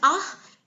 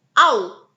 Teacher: the word ah is spoken as a monophthong, while the word ow is spoken as a diphthong. So now, you can hear it's only one part of your mouth which is moving.